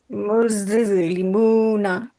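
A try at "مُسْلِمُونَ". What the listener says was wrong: না, আপনার জিভটা সরে যাচ্ছে, আপনি মুজ বলেন, শুধু বলেন মুজ। না, মুজ জিভ তো লাগলো না দাঁতে, মুজ। আপনি জিভটা দাঁতে ধরে রাখেন, মুজ, এরকম করেন। হ্যাঁ, মুজ, তারপরে ওখান থেকে বের হয়ে যাওয়ার পরে লাম উচ্চারণ করবেন, মুজলিমুনা। আপনি ভালো করে আয়নার সামনে দেখবেন, আপনি যখন করবেন দেখবেন যে আপনার জিভটা দাঁতের সাথে লেগে আছে নাকি।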